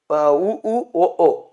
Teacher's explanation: இதழ்கள் வந்து குவிந்தா உ அப்படின்னு வரும்